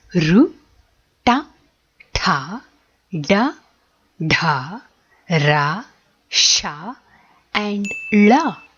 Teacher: alphabets are formed with the help of the upper part of the tongue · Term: Moordhanya